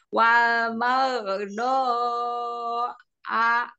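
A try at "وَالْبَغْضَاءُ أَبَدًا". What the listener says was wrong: Domah ya, U, bukan A. Baldo, U.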